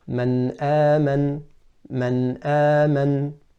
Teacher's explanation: The noon is pronounced clearly from the makhraj with no elongation of the gunnah. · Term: izhar